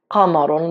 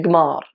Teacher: Obviously I teach them Libyans, and I know that qaf ends up being g. So rather than saying like qamarun, they say gmar.